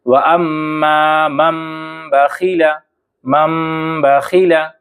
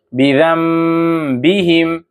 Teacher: تو نون ساکن کے بعد اگر با آئے، نون ساکن کے بعد اگر با آئے تو یہاں ہم کو قلب کرنا ہے، یعنی نون ساکن کو میم سے بدل دینا ہے